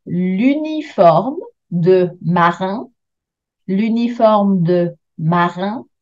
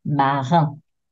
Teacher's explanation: Make sure you do a beautiful nasal N for marin. So you can't even hear the letter N.